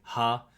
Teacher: he describes it as a Hauchlaut, sort of like breathy H, and I'm assuming that usually hints towards an English H.